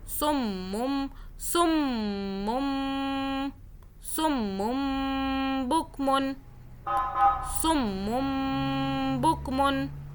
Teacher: میم پہ ہولڈ کیا، 2 سیکنڈ کا غنہ کیا